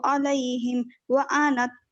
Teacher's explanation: अलैहिम में मीम साकिन के बाद वाव आ रहा है तो इजहार